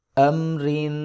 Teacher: تنوین پر ہم اخفا کریں گے، یعنی کہ ہم تنوین کی آواز کو ناک سے ادا کریں گے